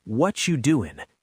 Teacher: But in connected speech, it's actually, "What are you doing?" The R gets almost swallowed and actors say it so fast that it sounds like one word.